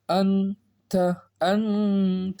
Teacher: यहाँ गुन्ना करेंगे क्योंकि नून साकिन के बाद ता आ गया हरूफ इख्फा में से.